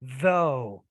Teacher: when I say though, there's definitely vibration going on with that one. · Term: eth